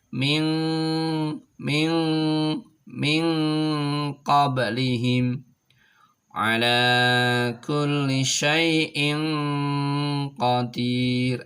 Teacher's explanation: Ada di pangkal tenggorokan. Maka ketika nun mati atau sukun ketemu dengan ko ini maka menuju ke pangkal tenggorokan sehingga menjadi ang